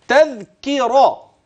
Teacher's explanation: الكاف من اقصى اللسان والراء من طرف اللسان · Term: تباعد